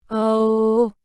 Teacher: there are no tone changes for this one it has a long sound